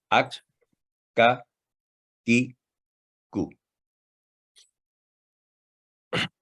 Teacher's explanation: اس کا مخرج حرف قوف سے تھوڑا پہلے ہوتا ہے اور ہلکی آواز میں ادا ہوتا ہے